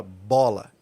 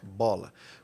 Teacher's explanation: quando você fala a palavra bola Você tem uma bilabial Você fecha os lábios